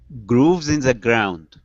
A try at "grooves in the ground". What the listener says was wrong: Oh, almost. Ground is sounding good. Grooves. Okay, give me that good GR. Grooves in the ground.